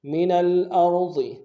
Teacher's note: را کو موٹا ادا کریں گے، ضاد کو موٹا ادا کریں گے